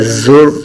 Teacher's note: را کو پر پڑا جائے گا اور زا کو سیٹی کی طرح تیز آواز کے ساتھ نکالیں گے